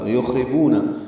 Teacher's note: خا ساکن پہ ہمس، را باریک